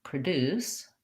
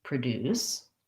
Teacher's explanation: my first syllable becomes the uh or the schwa sound because it's unstressed so for practicing that try just starting with deuce and then